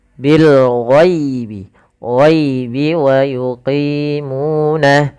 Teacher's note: kita jelaskan suara lamnya, dan ini kita namakan dengan alif lam qamariyah karena bertemu dengan huruf ghain